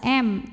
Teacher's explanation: mim sukunnya menghadapi huruf selain mim dan ba Ini hurufnya Hamzah maka mim sukun dibunyikan dengan jelas m tidak perlu ditahan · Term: izhar syafawi